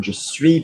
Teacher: No pronunciation of the S on its own.